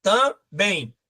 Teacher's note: Porque a sílaba tônica está na última sílaba. A tonicidade, a pronúncia mais forte está na última sílaba. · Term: oxítona